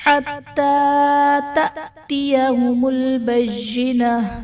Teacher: تأتیہم میں حمزہ ساکنہ ہے تو یہاں پر جھٹکا دے کر پڑھیں گے